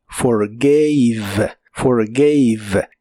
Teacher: La A de esta forma se pronuncia como EI.